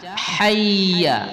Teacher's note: Jadi dengan shad, jangan dengan sin, jangan hayya 'alas salah atau hayya 'alas salah dengan ha. Nah, ingat posisi ha adalah bagian tengah dari tenggorokan halqi, huruf-huruf halqiyah ya